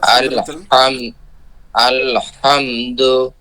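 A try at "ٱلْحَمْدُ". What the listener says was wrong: জি, আল, আল, অনেকবার ছেড়ে দেয়, আল, আল হাম, আলে, আলে উলে এলে এর যাবে না, মানে আল ধরে থাকা লাগবে। জি, আল হামদ।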